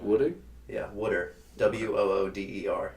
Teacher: it's also a very Philly, South Jersey thing to say wooder instead of water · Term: South Jersey accent